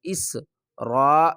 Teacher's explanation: حمزہ کو سین سے ملائیں گے اور سیٹی کی آواز آئے گی۔ اس را الف مد زبر را، 5 الف کی مقدار کھینچ کر پڑھیں گے۔